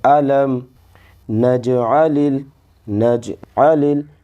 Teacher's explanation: میم پر جو ہے جزم ہے، تو لام کو میم میں ملا دیں گے